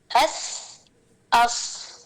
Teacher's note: सौद और सीन में रखावा और हम्स था इसलिए थोड़ी सी ढीली आवाज थी।